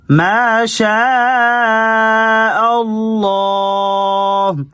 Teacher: شین پر دیکھیں مد ہے، اس کو لمبا کرنا ہے اور لام کو موٹا کر کے